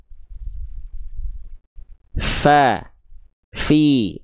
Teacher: Karena sifat huruf fa itu hams. Mengalir nafas dengan jelas. Deras lagi. Lihat ya. Saya izin perlihatkan lagi.